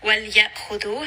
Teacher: hamza is going to be from the throat. It is going to have jahr. It is going to have shidda.